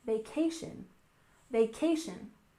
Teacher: And finally, we have vacation. Stress the second syllable, vacation, vacation.